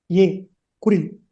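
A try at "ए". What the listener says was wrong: ஏ நெடில் தீர்க்கம். சொல்லுங்க. ஏ அப்படின்றது கிடையாது சம்ஸ்கிருதத்துல. ஏ.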